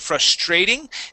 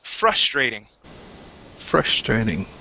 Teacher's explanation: The stress is at the beginning of the word.